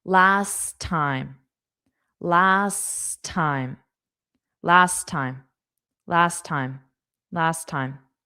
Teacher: Of course, time starts with a T. But since we already have a T on last we don't need to pronounce both. So, only pronounce one, but it will be on the second sound.